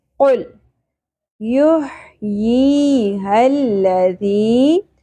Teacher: لام ساکن پہ قلقلہ نہیں ہونا چاہیے